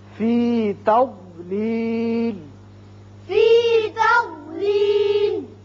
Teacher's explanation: زبان کی کروٹ اور اوپر والے بائیں طرف کی جو داڑیں ہیں ان کے ساتھ لگتی ہے تو ضاد ادا ہوتا ہے، زواد نہیں ہے۔